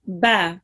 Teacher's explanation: have the ba with the fatha. It will be pronounced just 1 second long.